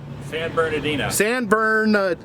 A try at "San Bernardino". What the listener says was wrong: There's another R in it. San Bernardino. San Bernardino. San Bernardino. Okay, the R is silent.